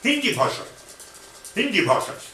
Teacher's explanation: in Hindi, the word Hindi, the first E is short and the last E is long